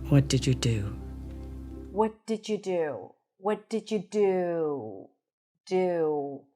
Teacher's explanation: notice how the do is stressed and prolonged because that's a stressed word, right? So we use pitch, but we also use length.